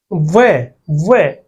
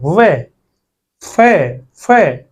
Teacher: व और फ का उच्चारण करते समय नीचे का होठ ऊपर वाले दांतों को स्पर्श करता है